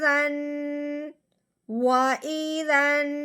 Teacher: نون مشدد ہونے کی وجہ سے جب ذال کو نون کے ساتھ ملائیں گے تو پھر ہم نے ساتھ ساتھ ایک الف کے برابر لمبا غنہ بھی کرنا ہے